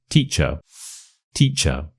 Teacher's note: You stress the teach part, and the little part at the end, is a schwa. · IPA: /ə/